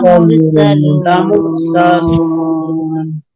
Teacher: র সাকিন তার ডাইনে পেশ মোটা করে পড়বেন